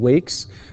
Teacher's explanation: Here, it's again wake. The verb ends with the sound k, and the sound k is voiceless. And, of course, the s sound is similar to the k sound in terms of being voiceless.